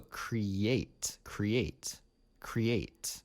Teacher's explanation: you can hear the Y in the middle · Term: Y insertion